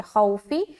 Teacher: تو خو میں جلدی کریں گے کیونکہ واو ساکن سے پہلے زبر ہے، واولین کا قاعدہ ہے، نرمی کے ساتھ جلد ادا کریں گے، فا کو زیر کے ساتھ پڑھیں گے، خوفی۔